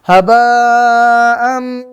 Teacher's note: Berarti mim ini berasal dari khaysyum, rongga hidung.